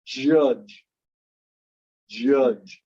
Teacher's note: You can, if you say it and really try to enunciate it, you'll feel the D rolling into the J at both the front and the back. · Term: J sound